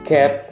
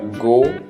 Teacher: Kalau yang velar ini diangkat ke arah langit-langit lunak.